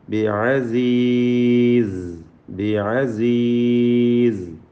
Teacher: ബിഅസീസ്, ബിഅസീസ് റിഖ്വായ സായിൻ്റെ ഉച്ചാരണം ശ്രദ്ധിച്ച് ബിഅസീസ് എന്ന് ഓതുക. സഫീർ എന്ന സിഫത്തുള്ള അക്ഷരമാണ്, ശ്രദ്ധിച്ചുകൊണ്ട് സാ ഉച്ചരിക്കുക